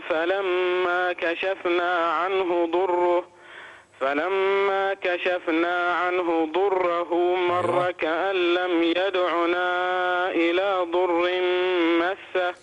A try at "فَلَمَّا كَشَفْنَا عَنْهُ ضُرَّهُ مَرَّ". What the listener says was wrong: فلما كشفنا عنه ضره مر فلما كشفنا عنه ضره ضره انتبه إلى الراء. رقق الراء.